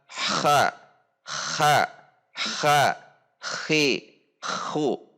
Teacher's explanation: posisi makhrajnya ke atas tidak di tengah tenggorokan